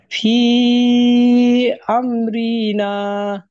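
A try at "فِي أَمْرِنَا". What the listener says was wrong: এই যে দেখেন, আপনার বাকিরাই বলতেছেন যে আপনি রতে টান দিচ্ছেন।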